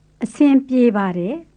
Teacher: Make sure you say pie as one syllable, so you're not saying piye bade, which sounds very foreign. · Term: The PY sound